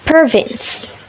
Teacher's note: The second consonant is the voiced labiodental fricative, which is the lower lip touches the upper teeth.